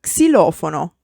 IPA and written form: ksiˈlɔfono (xilofono)